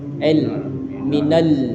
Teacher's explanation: lidahnya kita letakkan di gigi seri atas